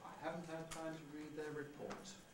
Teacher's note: Low prehead, high level head, and low fall.